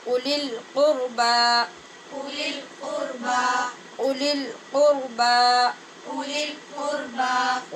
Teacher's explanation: اولی القربى، یہاں پر بھی واو جو اولی لکھا نظر آ رہا ہے، یہاں پہ واو خالی ہوگا اور صرف حمزہ کی آواز پڑھیں گے